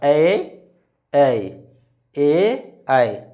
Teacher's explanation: ए ऐ क्या होगा? कंठ और तालु दोनों से उच्चारण होगा। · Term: कंठ तालु